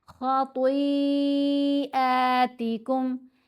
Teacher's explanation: خا اور طا دونوں کو موٹا پڑھیں گے. طا کے اوپر یہ جو مد ہے، مد متصل ہے، 5 حرکات کی مقدار لمبا کریں گے.